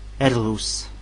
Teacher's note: R se prononce R, mais bien roulé.